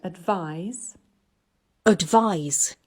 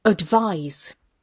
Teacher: this word advise advise has two syllables and we can see from the green color on the second block that it's the second syllable that's stressed